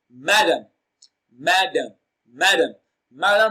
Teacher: distress it is pronounced louder and longer so madame madame madam madam receives the stress on its first syllable so the answer to this question is option a madam madam